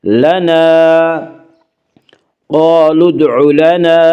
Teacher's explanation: قالوا ادع لنا، الف مدہ، الف ہمیشہ مدہ ہوتا ہے، الف سے پہلے ہمیشہ زبر ہوتا ہے، الف مدہ کو ایک الف کے برابر کھینچ کر پڑھیں گے